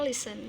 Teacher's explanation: listen dua suku kata ya, terdiri dari dua suku kata dan penekanannya itu dalam pengucapannya di suku kata pertama